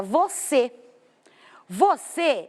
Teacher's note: A minha mais forte já é a última. Eu tenho a última e a penúltima. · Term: oxítona